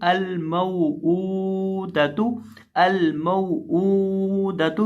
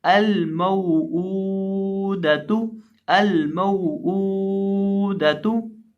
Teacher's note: सिर्फ हमदा को खींच के पढ़ेंगे, मीम या वाव को हम यहाँ नहीं खींचेंगे, क्योंकि यहाँ वाव ये जो है ये हरूफे लीन का है, हरूफे मद्दा का नहीं।